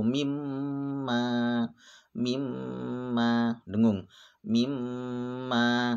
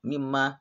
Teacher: ada dua huruf yang dobel yang pertama mati nah contohnya mimma Ini adalah bacaan hunah dan harus dibaca panjang dan dengung panjangnya ingat satu Alif atau dua harakat